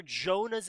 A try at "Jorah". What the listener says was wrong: Jonah? Yeah, his name is Jorah, not Jonah.